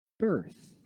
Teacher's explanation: So, birth, what happens there, the R is lazy, but the short I remains. The TH remains.